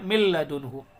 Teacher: لام آئے گا نون ساکن کے بعد تو گنہ نہیں کریں گے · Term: ادغام بلا گنہ